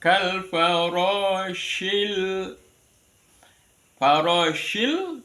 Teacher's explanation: anginnya tafasyinnya ya jadi keluarnya angin menyebar